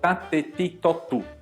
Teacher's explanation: Então, t ti to bem seco.